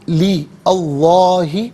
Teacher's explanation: لام کے نیچے زیر سے اس میں اللہ کی حرف لام کے ساتھ ملائیں گے، درمیان میں سے الف یعنی حمزہ کو حذف کیا جائے گا. اس میں اللہ کی حرف لام سے پہلے والے حرف لام کے نیچے زیر ہے تو اس میں اللہ کی حرف لام کو یہاں باریک کر کے پڑھا جائے گا. · اس میں اللہ کی حرف لام سے پہلے والے حرف لام کے نیچے زیر ہے تو اس میں اللہ کی حرف لام کو یہاں باریک کر کے پڑھا جائے گا. زبر یا پیش ہو تو پر پڑھتے ہیں، زیر ہو تو باریک پڑھتے ہیں.